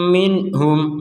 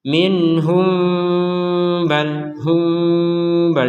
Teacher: mim sukun yang ini karena bertemu dengan ba maka kita bacanya dengan samar sekali lagi dibaca dengan samar kalau tidak kalau kita berhenti maka